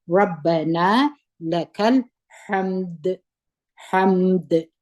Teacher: کوشش وکړئ چې د دال اواز بیرته قلقله وکړي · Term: د دال قلقله